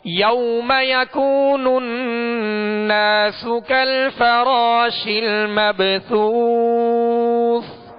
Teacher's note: سا کو ادا کرتے ہوئے نرمی کے ساتھ ادا کریں گے، سیٹی کی آواز اس میں پیدا نہ ہو